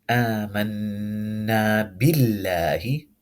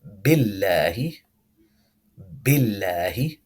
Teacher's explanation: the lam in the lafzul jalala will be pronounced light